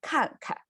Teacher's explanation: So pronunciation is 看. And the second 看 is a light tone. It's still like falling tone, but it's lighter, right?